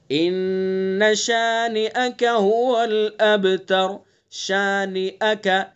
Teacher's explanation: نون کو بالکل نہیں کھینچنا ہے، خالی حرکت ہے، بس نون کے اندر غنہ کرنا ہے۔